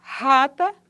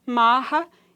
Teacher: não não não dá para perceber uma fricção audível no trato vocal ocorre em início de sílaba que seja precedida por silêncio e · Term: fricativo glotal